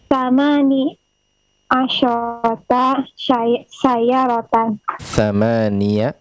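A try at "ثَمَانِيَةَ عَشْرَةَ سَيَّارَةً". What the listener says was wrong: Thamaniya. Kita perjelas fathah pada thamaniya.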